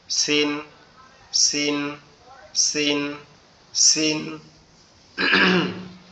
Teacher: সিন অক্ষরটা আমাদের জিহ্বার আগা, সামনের নিচের দুই দাঁতের আগার সঙ্গে লেগে উচ্চারিত হবে।